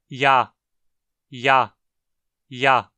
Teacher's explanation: Como a gente pode ver, ela representa uma aproximante palatal sonora. Ou seja, para pronunciá-la, a gente aproxima o dorso da língua do palato duro e vibra as pregas vocais